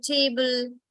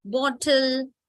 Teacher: Whenever you have L followed by E at the end, E is always silent. And this gives the schwa sound, ul sound